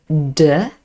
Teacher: we use our vocal chords so we have the plosive d it's formed in the same way as t but you need to use your vocal chords to make the sound voiced